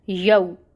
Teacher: واو ساکن سے پہلے یا پہ فتح کی حرکت ہے، تو یہاں پہ لین ہو رہا ہے، جہاں پہ لین کا قاعدہ ہو اس کو نرمی سے پڑھا جاتا ہے۔ یو، میم کے اوپر فتح ہے، یوما، ٹھیک ہے۔